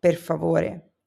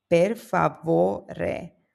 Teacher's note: The next word is per favore, which means please. The stress falls on vo, per favore.